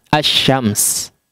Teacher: di idghamkan serupa dengan Pengucapan assyams ya serupa dengan pengucapan assyams lam sukunnya tidak terbaca melebur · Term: Syamsiah